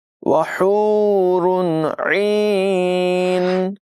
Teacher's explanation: ہا کی آواز حلق کے درمیان والے حصے سے نمایاں ادا کریں گے، را کو پر پڑھیں گے، عین کی آواز بھی نمایاں کریں گے۔